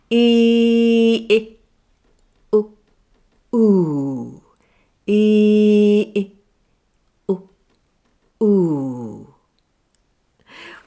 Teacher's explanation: as you pull your tongue further back just before you come to oo, you will find oo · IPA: /ʊ/